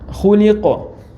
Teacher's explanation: Коф калкала с сукуном при паузе.